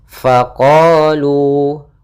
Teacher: ada Mad thi'i yaitu fathah bertemu Alif maka panjangnya dua harakat